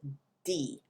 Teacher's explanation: it's the back part of your tongue or the middle towards the back that is against the roof of your mouth